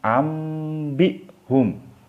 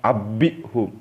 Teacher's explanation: jadi non mati ini diganti dengan mim mati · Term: iqlab